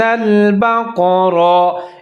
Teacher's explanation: بقرہ قاف اور را دونوں موٹا کر کے پڑھیں